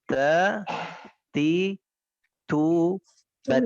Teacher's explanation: Jadi makhraj dengan menyentuhkan ujung lidah dengan gusi gigi dari bagian atas. · huruf ta ketika diucapkan terdengar ada nafas yang mengalir yang disebut hamas atau mendesis